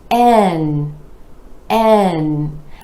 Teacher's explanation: again are e vowel sound rolling into the um consonant where the tip of the tongue comes up to the alveolar Ridge behind the top front teeth and the air is Flowing out the nose